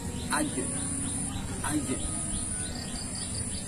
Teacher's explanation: dilakukan dengan cara merapatkan bagian tengah lidah ke langit-langit mulut dengan nafas tertahan atau disertai dengan nafas yang tertahan. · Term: huruf jim